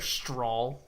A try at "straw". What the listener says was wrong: no L. There's no L in straw. Say straw.